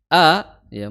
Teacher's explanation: Makhrajnya adalah di tenggorokan paling dalam.